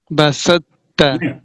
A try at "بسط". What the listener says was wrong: بسوت، نہیں سوت سوت، نہیں سوا کو آپ نے موٹا سا کر کے تا میں داخل کرنا ہے. سوت. بسوت. بسوت. فا کی صفت تفخیم باقی رہ جانی ہے.